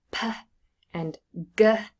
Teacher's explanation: There's closure in some part of the vocal tract, and that is released. And so the sudden release of air produces a sound. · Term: plosives